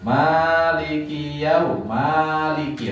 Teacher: Maliki nah niki mimnya panjang ngoten nggih